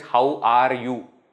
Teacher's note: for Indians how are you R is very prominent very clear no confusion